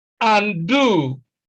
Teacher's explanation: stress is on the second syllable because the first syllable is a prefix